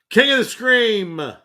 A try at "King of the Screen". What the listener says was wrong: You flat out said Scream that time. Yeah, but you said with M. SCREEN.